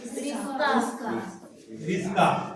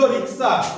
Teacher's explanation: পরে এই স টা আগে চলে এলো ক টা পরে পরে চলে গেল